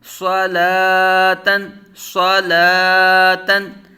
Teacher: صلا، تا دو زبر تن، صلاتن۔ صاد پر مستعلیہ متحرک بغیر کھینچے بغیر جھٹکا دیے، لام کھڑا زبر قائم مقام الف مدہ، ایک الف دو حرکات کے برابر کھینچ کر، تا تنوین منون، صلاتن، صلاتن۔